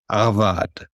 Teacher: So in the Arabic, it'd be something more like avad. So it's a soft G way deep in the throat.